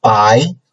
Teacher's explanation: still second tone i is upcoming right from lower point to a higher point